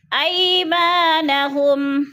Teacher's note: خالی سے پہلے میم کے اوپر زبر ہے تو الف مدہ، الف مدہ کو ہم نے 1 الف 2 حرکات کے برابر کھینچ کر پڑھنا ہے